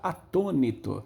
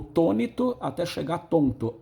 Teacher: o atônito na boca do povo virou tônito até chegar tonto. Aquela queda do A é uma aférese.